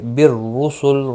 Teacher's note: را پیش کی وجہ سے پر پڑھا جائے گا